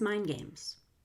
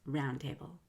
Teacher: If ND comes before a consonant, you can drop the D.